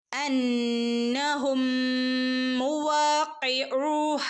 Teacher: മീമിന് ശേഷം മീമു വന്നാൽ മണിച്ചു കൂട്ടിച്ചേർത്ത് ഓതണം